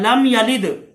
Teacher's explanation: मीम पे गुन्ना यहाँ नहीं होगा क्योंकि ये इजहार शफवी का कायदा है